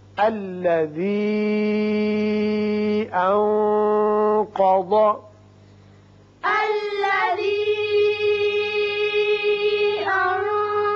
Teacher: یہاں نون پر اخفا ہوگا، قاف بھی پر پڑیں گے، ضاد بھی پر پڑیں گے